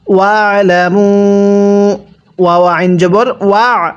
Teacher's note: এই আইনটা পড়ার সময় গলার মধ্যে চাপ দিয়ে পড়বেন, তাহলে আইনটা সহি শুদ্ধ উচ্চারণ হবে।